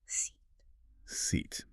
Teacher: So the vowel in seat is what we call a tense vowel. Your tongue is pushed to the highest and furthest front position it can possibly go, and your lips are pulled into a tight smile.